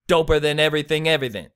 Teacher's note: It's a stressed and then an unstressed and then an unstressed syllable. So, ba-da-da, ba-da-da, ba-da-da. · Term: dactylic